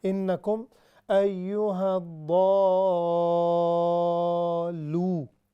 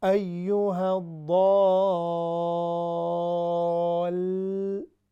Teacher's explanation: یہ مطلب یہ جو لام ہے یہ اس پر بھی شد ہے, آپ دیکھ لیں یہاں پر سامنے نظر آ رہا ہے. تو یہ ضاد لام کے ساتھ ملے گا, اور ملے گا کیسے؟ زبان دانتوں کے پیچھے جو ہے لام کے حرف جو اس کا مخرج ہے وہاں پر جائے